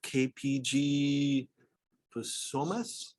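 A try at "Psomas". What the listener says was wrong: SOMAS, all right, it's a silent P.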